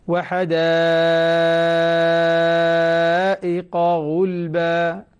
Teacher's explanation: أشبع المتصل ضروري جدا، المتصل يشبع هنا لأن المتصل عند ورش ست حركات ليس أربعة